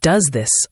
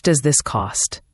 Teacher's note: the s sound at the end of does often blends with the th sound in this. It becomes does this almost as one word.